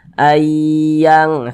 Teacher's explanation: didengungkan suaranya itu kita tahan kita panjangkan sejenak